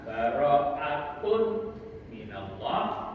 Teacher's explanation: yun Nun mim dan Wu kalau itu dua kata baroatun minallah itu dibaca gunah Dibaca berdengung · Kalau itu dua kata barokatun minallah itu dibaca gunnah, dibaca berdengung. Namun kalau dalam satu kata atau satu kalimat maka bacaannya berubah menjadi idhar wajib atau idhar mutlak. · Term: idgham bighunah